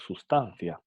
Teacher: Aquí la substancia, la B se debilita tanto hasta el punto de a veces la pronunciamos sustancia